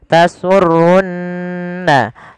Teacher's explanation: ada Nun berharakat tasdid maka ia kita baca dengan bacaan gunah ditahan suara nunnya